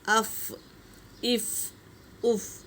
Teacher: جیسے حمزہ فا زبر اف، یہ اس کا مخرج ہے۔ ثنایا علیہ کے 2 دانت نیچے کے گیلے ہونٹوں سے لگے